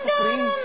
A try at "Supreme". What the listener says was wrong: Supreme. Huwag mong i-roll yung R kasi English word yun. Kapag Tagalog, saka mo i-roll yung R.